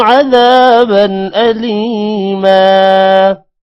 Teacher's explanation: اعد لهم عذابا ذال کے بعد الف لمبا کریں گے, بن پر غنہ نہیں کرنا کیونکہ آگے حروف حلقی حمزہ آ رہا ہے. لام کے بعد یا ہے اور میم کے بعد الف ہے.